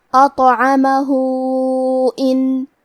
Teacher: اگر ہم یہ کلمہ پہ رکے تو ہا پہ جزم سے رکیں گے، لیکن یہ کلمہ کو پوری آیت کے ساتھ ملا کے پڑھے تو کیونکہ اس پہ الٹا پیش ہے اور اس پہ مد کا بھی علامہ ہے، تو یہاں حکم ہے مد صلہ کبریٰ، مطلب ہم اپنی آواز 2 سے 4 مد کے برابر لمبی کریں گے